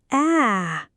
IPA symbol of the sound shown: æ